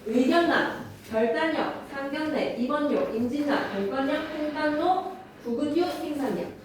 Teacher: 다음과 같은 단어들은 리을을 니은으로 발음한다